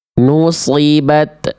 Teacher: Memantulkan suara huruf ta. Ya, ketika sukun.